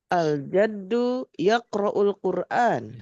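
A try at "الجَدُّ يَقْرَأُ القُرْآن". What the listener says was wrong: Sip, alhamdulillah bagus, mantap.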